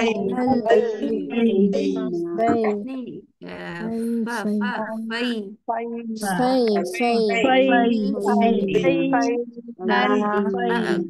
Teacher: فا کے اوپر ہمس کرنی ہے سانس باہر آئے